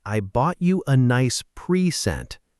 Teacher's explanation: It's a completely different word, a verb. So the correct way for the gift is I bought you a nice present. Stress on pre.